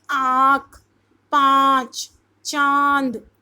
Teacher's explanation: अनुनासिक यानी चंद्र बिंदु, जब हवा नाक और मुंह दोनों से निकलती है तो वो अनुनासिक कहलाती है।